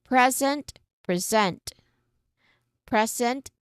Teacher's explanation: So, it's um when we talk about a gift, it's wrapped in shiny paper, tied with a ribbon, and handed to someone with love or um um celebration. We stress on the first syllable because we're naming a thing. The noun sits like a box and it is solid.